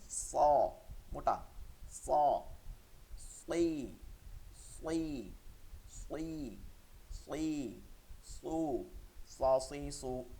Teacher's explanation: সদটাকে মোটা রাখতে হবে এটা হরফুল ইস্তেলা মোটা হরফ